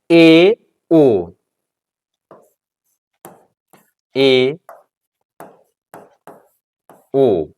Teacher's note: अर्ध संवृत का अर्थ होता है आधा बंद जिसका उच्चारण करते समय मुख आधा बंद रहे